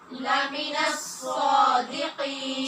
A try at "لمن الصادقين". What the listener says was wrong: صا کے لیے ہونٹ گول نہیں کیجیے. لمن لمن الصادقین.